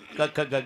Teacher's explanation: क ख ग घ हे कंठस्थान इथे उगम आहे